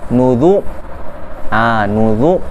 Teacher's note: Huruf dhammah menyebabkan ra yang sukun itu dibaca dengan tebal.